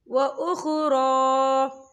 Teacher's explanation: را پہ کھڑی حرکات ہے، 2 یا 3 حرکت کے برابر سے کھینچا جائے گا۔